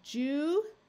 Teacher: you'll notice in this word the I takes on the short I sound rather than the long ey sound